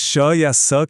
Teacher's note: और श या स की जो एक हिसिंग साउंड आती है वो इसलिए बनती है क्योंकि हवा को एक बहुत ही पतली सी जगह से जबरदस्ती निकाला जाता है। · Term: संघर्षी व्यंजन